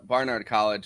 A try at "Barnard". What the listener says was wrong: I know you didn't say Barnyard College, but it sounded like you said Barnyard College.